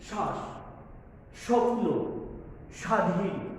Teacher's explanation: যে ব্যঞ্জনের সাথে যুক্ত হচ্ছে আমাদের ব ফলা, সেই ব্যঞ্জনে আমরা একটি ঝোঁক দিচ্ছি। যেমন শ্বাস, এই তালব্যস্বতে ব ফলা আছে, সুতরাং তালব্যস্বটাকে আমরা ঝোঁক দিচ্ছি।